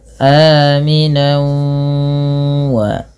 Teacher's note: Yaitu tanwinnya bi gunnah disertai dengan gunnah, yaitu adanya penahanan ketika sudah dimasukkan tanwinnya. Maka bunyinya aminau wa. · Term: idgham bi gunnah